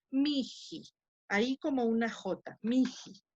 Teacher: entre estos dos sonidos vocálicos, se intercala un sonido aspirado, el sonido, la aspiración de la J. Entonces queda miji, ahí como una J, miji.